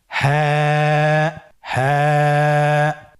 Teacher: হাফটি উচ্চারণের স্থান কন্ঠনালীর শুরু হতে অথবা আমরা যদি আরবিতে বলি হলকের শুরু হতে এটা এই হরফটি উচ্চারিত হয়।